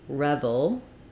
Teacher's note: Revel um has first syllable stress · we're going to have a very reduced vowel in that second syllable